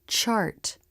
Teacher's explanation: the lips flare and the teeth come together then release into the ah as in Father vowel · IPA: [tʃ]